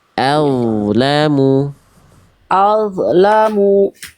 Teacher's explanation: Jangan kasih mantul d sukunnya.